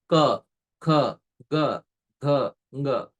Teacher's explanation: the first set of consonants is uttered through the Kantha